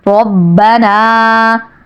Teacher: ربنا، آپ پہ کھڑا زبر ہے اس لیے 1 الف کے برابر کھینچنا ہے، تی کو بالکل نہیں کھینچنا اور نون کو 1 الف کے برابر کھینچنا ہے۔